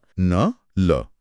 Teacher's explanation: न या ल बोलते समय जीभ दांत को नहीं बल्कि दांतों के ठीक पीछे जो मसूड़े का कठोर उभरा हुआ हिस्सा है उसे छू रही है। उसी मसूड़े को वर्त्स कहते हैं और वहां से उच्चारित होने वाली ध्वनियां वर्त्स कहलाती हैं। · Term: वर्त्स्य